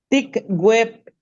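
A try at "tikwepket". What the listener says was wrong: No, está pronunciándolo como we, pero es kwe. Con K, Ticuepquet, porque la P es una consonante.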